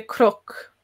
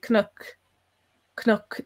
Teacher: there's like a little vowel between the C and the N